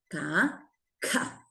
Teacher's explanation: Aspiré, expiré un poquito de aire.